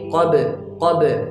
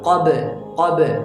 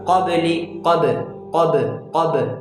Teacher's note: अब यहाँ पर जो कलकला होगा वो कलकला सगीरा होगा, ये छोटा कलकला होगा